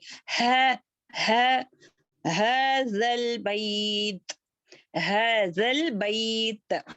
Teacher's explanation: हमारी जुबान की नोक जो है ऊपर सनाया उलिया के दांतों के किनारों को टच करना है